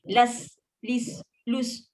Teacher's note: Las, lis, lus pun ada sifat amas, angin lepas.